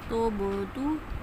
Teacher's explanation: با حروف قلقلہ میں سے اس کی آواز پلٹ کے آئے گی